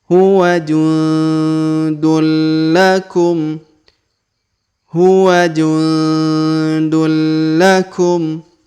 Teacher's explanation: maka tanwin unnya menghilang, melebur langsung masuk ke huruf lam bertasdid. Ditahan dan ditekan 2 harokat ya.